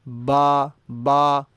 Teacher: ہونٹ ہل رہے ہیں، زبان کا کوئی دخل نہیں، دانتوں کا کوئی دخل نہیں، تالو کا کوئی دخل نہیں